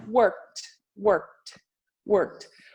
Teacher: O K fica pouco reduzido e o T fica um pouco mais forte.